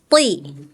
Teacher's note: Kalau th itu tebal. Pangkalnya naikin pangkal lidahnya tuh yang ujung belakang. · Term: huruf tho